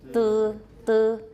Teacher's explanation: That's a very high back unrounded vowel.